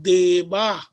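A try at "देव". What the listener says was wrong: Deva, dirgha should not be told. Deva. Deva only. It is Hrasva Akara, one matra kala for pronunciation. If somebody is pronouncing Deva, it is wrong. It is incorrect. Deva is Akara only, Hrasva Akara only.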